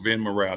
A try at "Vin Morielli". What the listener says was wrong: Morielli, actually. You know, us Italians, we love vowels. so just throw a vowel in the end, Morielli.